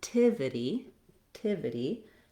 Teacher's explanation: My length and my stress is on the third syllable. It has that I vowel, and then we're going back to our ity ending. So starting on the stress syllable here, it would sound like tivity, tivity, and then connectivity.